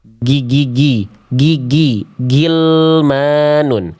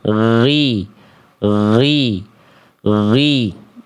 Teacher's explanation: Huruf ghain jadi tidak dibaca gi tapi ghri. Ghri, dialirkan suaranya.